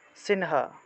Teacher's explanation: অনুস্বার শব্দের মাঝখানে থাকায় ন এর মত উচ্চারণ